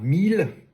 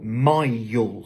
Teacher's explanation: On passe d'un son E à un son I. Donc pour prononcer ce mot-ci, on ne dit pas 1000, comme le dirait peut-être un francophone, mais plutôt mile.